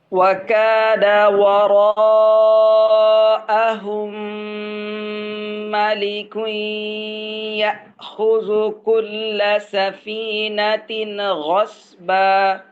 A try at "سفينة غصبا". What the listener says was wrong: সাফিনাতিন কলকলা হয়ে যায়, ধরে পড়বেন, সাফিনাতিন। ভাই, সাফিনাতিন কলকলার মতো হয়ে যায়, সাফিনাতিন গসবা।